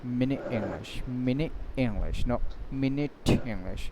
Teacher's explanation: আপনি টিকে উচ্চারণ করতে যাচ্ছেন কিন্তু আবার কি করছেন? উচ্চারণ না করে ফিরে আসছেন · আপনি অনেকগুলো বাতাস জমা করলেন টি উচ্চারণ করবেন বলে কিন্তু উচ্চারণ না করে কি করলেন ফিরে আসলেন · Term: গ্লোটাল স্টপ, গোলটাল স্টপ